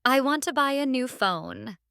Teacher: The stress is on want, buy, and phone.